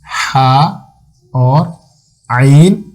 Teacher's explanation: ये वस्फ़ हल्क यानी हल्क का दरमियान वाला हिस्सा, गले के दरमियान से ये दोनों हरूफ हा और आइन अदा होते हैं